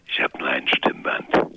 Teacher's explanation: das hört sich auch so ein bisschen geflüstert an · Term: heiserer Stimme